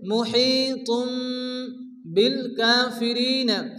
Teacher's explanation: তানবিনের পরে বা আসছে এখানে কলব হবে